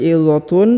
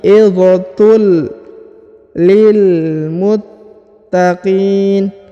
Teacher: Harokat un ya bertemu dengan lam berharokat tasdid, maka dia ditahan dan ditekan, kemudian huruf unnya melebur masuk ke huruf li dan menghilang ya. Wa mau'izatul, bukan lagi izatun tapi izatul lil muttaqin.